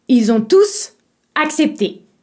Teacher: si le mot tout t o u s est un pronom vous devez obligatoirement le prononcer tous